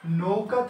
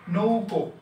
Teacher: ও, এখানেও ও আছে, তার মানে প্রথমটা অপরিবর্তিত আছে। পরিবর্তন হচ্ছে কোনটা? শেষেরটা। আ ছিল, হয়েছে ও। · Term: প্রগত স্বরসঙ্গতি